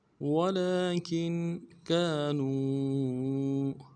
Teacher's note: کاف کو نون ساکن کے ساتھ ملانا نون ساکن میں غنہ کریں گے